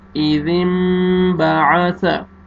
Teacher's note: آپ نے نون کو میم میں چینج کرنا ہے، اذم باع ثا، غنہ کے ساتھ پڑھیں گے